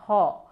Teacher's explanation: ব্যঞ্জন ধ্বনি বাংলায় হ ধ্বনিটিকে কণ্ঠনালীয় ব্যঞ্জন ধ্বনি বলা হয় কারণ এই হ ধ্বনিটি উচ্চারণের সময় কণ্ঠনালীর পেশি সংকুচিত হয়ে মধ্যবর্তী শ্বাসবায়ুর পথকে রুদ্ধ করে দেয়